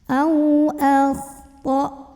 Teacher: ada huruf lin karena ada waw sukun sebelumnya fathah, maka ini dibacanya cukup dilembutkan. Au akhta. Ini hamzah punya sifat syiddah dari segi suara, jadi makin kita tekan ke makhraj hamzah ya, ke tenggorokan bawah, makin gak ada bunyi.